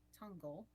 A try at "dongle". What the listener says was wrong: Dongle with a D.